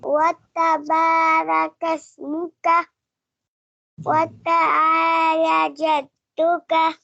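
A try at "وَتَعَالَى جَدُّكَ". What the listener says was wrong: یہ آپ نے کھڑی زبر کو کھینچنا ہے. ابھی قاعدے میں آپ نے نہیں پڑھی کھڑی زبر، کھڑی زیر کھڑی زبر جلدی نہیں کرنی، یہاں کھینچنا ہے، یہاں نہیں کھینچنا.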